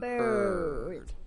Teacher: when we get the word bird, our teeth are close, very close together, and it's a flat kind of sound.